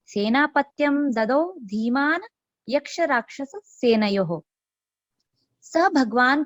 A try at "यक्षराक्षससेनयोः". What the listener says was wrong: आप केवल योह को थोड़ा लंबा पढ़िए भगिनी, योह योह नहीं योह, ठीक है योह थोड़ा। सेनयोः